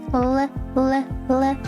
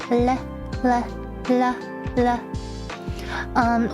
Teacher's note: When you make the L sound, your tongue, the tip of your tongue is placed at the edge or right in between of your gums and your front top teeth.